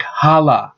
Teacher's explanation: Han-la. So the N disappears to make it sound like hala. This is actually a form of assimilation.